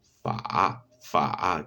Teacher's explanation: Después tenemos la labio dental, que es la F. Se produce oprimiendo los dientes incisivos superiores contra el labio inferior, dejando salir el aire con cierto roce